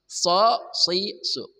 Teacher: Shad dari ujung lidah bersama ujung gigi seri bawah